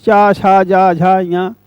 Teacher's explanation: जिह्वा जो है वो तालु का स्पर्श कर रही है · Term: तालव्य